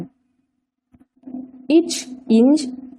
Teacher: நாவின் இடைப்பகுதி நடு அன்னத்தை தொடுவதால் பிறக்கின்றன